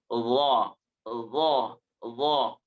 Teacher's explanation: tetap mengenai daripada gigi si atasnya ujung gigi si atasnya bagian dalam